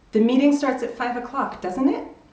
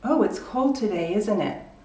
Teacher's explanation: you see my voice drops, and that means I'm not asking you a real question